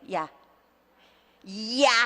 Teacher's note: 그 앞에 있는 이는 우리가 배우는 단모음의 이가 아니라 힘이 없어요. 반자음 반모음이에요. 혼자는 못 돌아다니는 거예요.